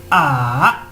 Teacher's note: el tono 3 tiene que bajar mi voz y subir